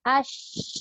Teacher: Sebab macam sin, zai dengan sad dia tolak, lidah kita bawa ke gigi bawah. Tapi shin ni tengah lidah dah tolak. Jadi dia lagi kuat. Maksudnya dia menyembur tu kuat, berhamburan. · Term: tafashi